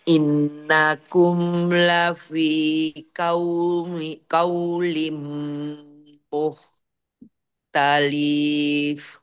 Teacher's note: Qaulim langsung masuk mim. Itu belum di gunnah. Mendengung mim.